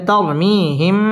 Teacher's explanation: ইকফায়ে শাফাঈ গুন্না করে পড়তে হবে । মিম সাকিনের বামে বা আসলে ইকফায়ে শাফাঈ গুন্না করে পড়তে